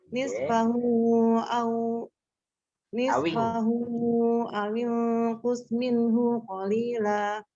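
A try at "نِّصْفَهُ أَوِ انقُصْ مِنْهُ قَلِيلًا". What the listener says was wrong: Hunya jangan jeda, kalau bisa hunya langsung min hu qalila.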